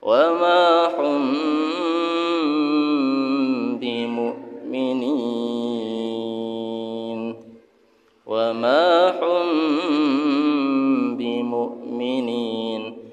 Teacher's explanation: Mim mati bertemu dengan ba dibaca dengung mim sukunnya. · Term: Ikhfa syafawi